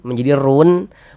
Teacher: Jadi kalau ada huruf wau sukun sebelumnya ada harakat dommah, maka huruf yang memiliki harakat domah ini dibaca panjang. Sehingga ru dibaca panjang. Kalau kita membacanya sampai ru saja, nah tetap menjadi mad thabi'i. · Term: mad arid lukun